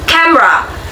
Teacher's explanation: In pronunciation syllabification, many people pronounce it as camera. The middle syllable me is often condensed, resulting in a two-syllable pronunciation.